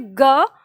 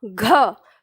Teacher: फिर बोलते हैं ग, घ, तो ग की तुलना में घ में ज्यादा हवा लगती है